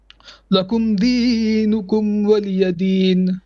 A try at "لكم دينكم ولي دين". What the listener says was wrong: No, still too long. Lakum dinukum waliyadin. Okay, you're still breathing at the end of your ayahs, so be careful with that.